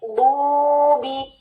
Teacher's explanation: ये वाव साकिन, उससे पहले दोमा, ये क्या है? वाव मद, यानी इसको हमने 2 काउंट्स देने हैं